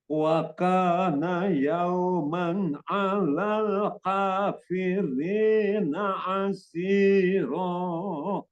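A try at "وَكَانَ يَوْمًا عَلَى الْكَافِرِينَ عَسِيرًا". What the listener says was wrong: Kaf itu sebetulnya gampang, namun kadang-kadang kita terbawa seperti kof. Hati-hati dia jadi kayak kof ya.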